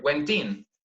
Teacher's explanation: a consonant and the next word starts with a vowel sound speakers link the words together so they sound like one word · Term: connected speech